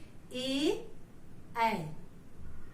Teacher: फिर उसके बाद हमारा होता है कंठ तालव्य, जिसमें कंठ और तालु, तालु ऊपर का, उसका भी स्पर्श होता है। जैसे ए, इसका उच्चारण करते समय हमारा कंठ और तालु दोनों का स्पर्श हुआ है।